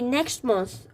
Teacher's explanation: you're not supposed to say the t sound in the next. The t sound you're not supposed to say it, so you basically say next month.